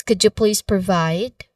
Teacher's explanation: Now, the stressed word here is provide. Specifically, the stressed part is the second syllable, vide, which has, it has a diphthong sound I.